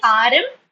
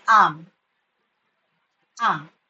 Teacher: So in ARM, R has to be silent. So it should not be RM.